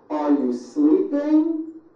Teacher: notice how my voice goes up at the end of a question like this